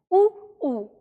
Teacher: इसके बाद हम बात करते हैं उ ऊ की। तो उ ऊ का उच्चारण स्थान होता है होठों से। यानी जब हम उ का उच्चारण तभी कर पाते हैं जब हम अपने होठों से हवा को रोकते हैं। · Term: ओष्ठय